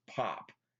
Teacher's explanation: you can feel that explosion of air. It's called a plosive.